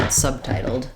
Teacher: because my B in subtitled is followed by a consonant sound, I'm not going to let it out